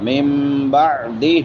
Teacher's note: من بعدہ نون ساکن کے بعد با ہے، یہاں پہ اقلاب ہوگا. من بعدہ ہا کے نیچے کھڑی دیر لمبا کر کے پڑھیں گے.